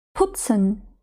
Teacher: ми вимовляємо п з придихом